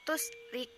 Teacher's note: tarkik karena huruf ro berbaris kasroh dan ro dibaca tipis